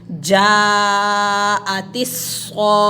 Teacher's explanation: پتہ چلا کہ یہ گول تا جو ہے اس کے اوپر زبر زیر پیش ہو تو ہم اس کو ساکن کر کے پڑھیں گے اور ساکن ہا میں بدل دیں گے. تا کی آواز نہیں آئے گی، صاخت نہیں پڑھیں گے، تا نہیں پڑھیں گے، بلکہ ہا کی آواز نکالیں گے